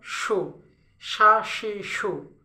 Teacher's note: এটা হচ্ছে জিব্বাটাকে আপনার হচ্ছে জিব্বার মাঝখান থেকে সাউন্ডটা, জিব্বার মাঝখান থেকে সাউন্ডটা আসবে